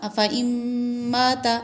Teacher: یہاں ادغام مع الغنہ ہو رہا ہے